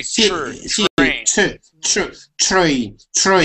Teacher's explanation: So whenever you have a word that starts with a T or that has a TR in it, when you pronounce that TR, that's a chur sound.